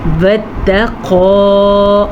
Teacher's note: بعہدہ، اور یہ عین ہے، اسے بعہدہ پڑھنے سے گریز کریں، اس کو بعہدہ۔ واتقوا، قاف کو موٹا پڑھیں گے، قاف حروف مستعلیہ میں سے ہے۔